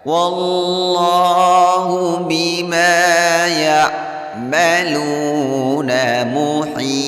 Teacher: mad arid lis sukun boleh dibaca 2 sampai 6 harokat.